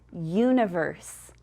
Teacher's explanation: the long u says you, like at the beginning of universe or in the middle of the word future